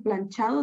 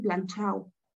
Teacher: el debilitamiento de D entre vocales. Esto sucede que en lugar de decir planchado, dicen planchao.